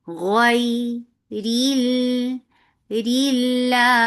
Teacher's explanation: Lafz Jalala will be light and Ra will be light because Ra has Kasra